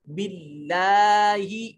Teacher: کیف تکفرون باللہ، اب یہ دیکھیں کلمہ جلالت سے پہلے زیر آ گیا، اب لام کو موٹا نہیں کریں گے